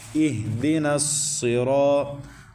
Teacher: اہدنا الصراط، نون کو صاد کے اندر ٹچ کرنا ہے، اس کو آپس میں ملانا ہے، اور صاد حروف مستعلیہ میں سے ہے، موٹے حروف میں سے ہے، اس کو پر پڑھیں گے